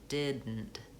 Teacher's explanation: I don't release the air from did. I release it right into the N. · So I don't say didn't with a aspirated T, I say didn't. And the N in that word is kind of a syllabic N, which means that there's really no vowel sounds there in that syllable. So one syllable is did, and the next syllable is nt. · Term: stopped D